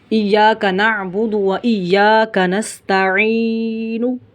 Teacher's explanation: آخر میں ہونٹوں کی گولائی ہم نے ظاہر کرنی ہے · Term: وقف بالاشمام